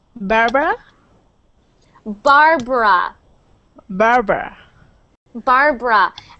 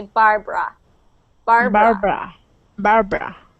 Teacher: your tongue isn't rolling for that R Bar and we actually pronounce that barb r no so we